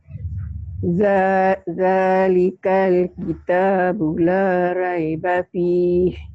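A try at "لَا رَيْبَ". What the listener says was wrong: Bukan Ray, Roy. Roy, bukan Ray. Roy.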